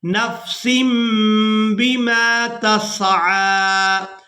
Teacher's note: تنوین میں جو نون کی آواز ہے اس کو ہم نے میم کے ساتھ بدل کر ادا کرنا ہے. اس کی وجہ یہ ہے کہ تنوین کے فوراً بعد با آ گئی ہے تو یہاں تنوین میں جو نون کی آواز ہے اس کو میم کے ساتھ بدل کر ادا کریں گے.